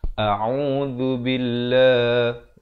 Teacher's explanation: Lafaz jalalah dibaca nipis 2 harakat.